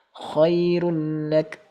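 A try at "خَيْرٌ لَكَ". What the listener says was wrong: Tambah tebal ru. Tipiskan lam sukun. Rulla. Rulla. Pancing dari kasrah coba. Rilla. Rulla. Rilla. Rulla. Khairul laka.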